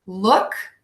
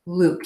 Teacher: look nice and short and Luke is nice and long